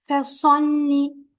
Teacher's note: Lam has to be a bit stronger because of the shadda here.